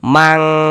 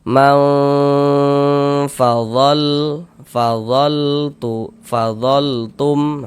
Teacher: Kemudian didengungkan. Jadi di bagian maunya itu suaranya itu kita tahan ya, kita panjangkan sebentar sepanjang 2 harokat.